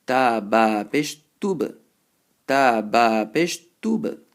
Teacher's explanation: Now ba is a qalqala letter, so you have to bounce it, but don't bounce it so aggressively that you end up putting a zabr on top.